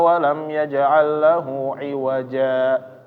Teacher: dia berhenti berhenti sebentar tanpa menarik napas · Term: saktah